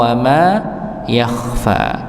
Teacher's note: Khnya di tebalkan. Fnya dibaca dua dua harakat.